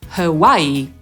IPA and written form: həˈwaɪiː (Hawaii)